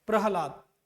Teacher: प्रहलाद, यहां पर देखो ह का उच्चारण पूरा नहीं हो रहा है, हम बोलते क्या है, प्रहलाद, ये ऐसे रहेगा प्रहलाद। तो ह यहां कम उच्चारण हो रहा है, सबसे ज्यादा उच्चारण क्या हो रहा है, ला और द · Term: बलाघात